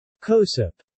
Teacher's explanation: the (Spanish) minimally-voiced J sound has evolved to a plosive